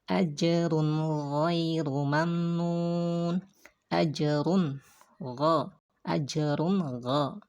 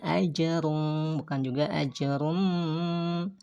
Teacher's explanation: tapi bacanya jelas nunnya dan pendek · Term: izhar